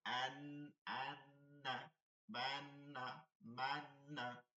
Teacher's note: আর নাকের মধ্যে নিয়ে গুন্না করতে হয়, গুন্না শব্দ ধরে রাখা। যেমন আন, আন্না, বান্না, মান্না।